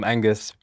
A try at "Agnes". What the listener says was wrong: Agnes. Agnes. You said Angus. Agnes.